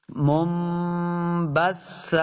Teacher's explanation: ہَبَاءً منبثا دیکھیں یہ آپ کو نون ساکن کے ساتھ چھوڑا سا میم بھی نظر آ رہا ہے. نون ساکن کے بعد حرف با آیا تو ہم نے اس کو میم سے بدل کے یعنی غنہ کر کے پڑھنا ہے. میم کو میم کے ساتھ ملانا ہے.